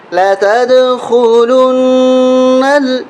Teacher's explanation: گیند دیوار میں لگتی ہے آواز کرتی ہے، لتد، لتد خلن، یہاں نون پہ ہم غنہ کریں گے، نون کے اوپر تشدید ہے